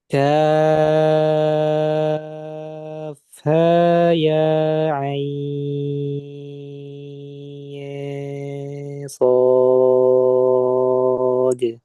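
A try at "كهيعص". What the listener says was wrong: nah, ha sama ya-nya kurangi sedikit lagi.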